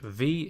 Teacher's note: it's also the voiced version of the f sound we saw at the start so for this one again we're · put our top teeth on the bottom lip and then blow but this time your vocal cords need to vibrate